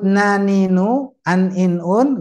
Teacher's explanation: Tapi ternyata pula dia keluar dari hidung. Jadi dua tempat. Keluar dari ujung lidah dan juga hidung. · Di ujung lidah ini nempel ke ujung langit. Ya. Tapi ternyata pula dia keluar dari hidung.